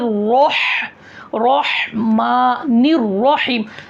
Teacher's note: ही निकालना है बड़ी हा नहीं निकालना है बिस्मिल्लाह हि रह रह में र पूर होना है उसके बाद में र से जब हा को मिला रहे हा भी निकलना है